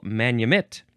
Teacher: Manumit is pronounced basically like I'm saying, the emphasis on the last syllable